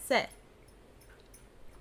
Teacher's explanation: I'm placing the tip of my tongue at the back of my teeth very lightly, very gently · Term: soft s